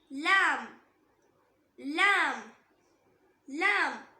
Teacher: நாக்கோட நுனி இருக்குல்ல, அந்த நுனியோட ரைட் இல்ல லெஃப்ட் இதுல ஏதாவது ஒரு சைடு மேல் பற்களோட ஈருக்கு கொஞ்சம் உள்ள இருந்து உச்சரிக்கணும்